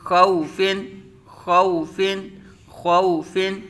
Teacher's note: خو، فا دو زیر فن خوفن خوفن، خوا پر مستعلیہ متحرک، واو ساکن سے پہلے زبر واو لین ہوگا، فا متحرک بغیر کھینچے بغیر جھٹکا دیے